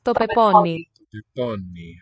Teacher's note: Sounds like the N is geminated.